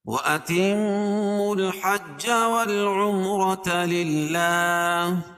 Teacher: میم مشدد ہے، اس میں غنہ ہوتا ہے، ایک الف کے برابر، اس کے ناک میں آواز کو لے جائیں گے۔ وَأَتِمُّوا الْحَجَّ وَالْعُمْرَةَ، میم ساکن کے بعد میم اور با کے علاوہ کوئی اور حرف آئے تو اظہار شفوی، اور را کے اوپر زبر ہے تو را کو پور پڑھیں گے۔